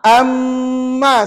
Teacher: Nun mati tu dah tak dibaca dah. Sebab dah masuk dalam huruf mim. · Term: idgham